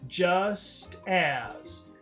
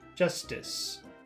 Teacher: the first difference is the length the duration of the vowel sounds two long vowel sounds